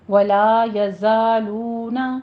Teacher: لا الف مد ادا کیجیے منہ کو کھول کر، 2 کاؤنٹ کرنا ہے